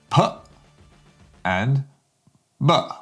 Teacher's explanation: you're using your lips to stop the air.